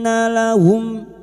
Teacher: mim sukun bertemu sad, mim sukun dibaca jelas tanpa mendengung, idhar safawi